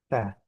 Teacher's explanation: huruf ta itu ujung lidah bertemu dengan gigi seri atas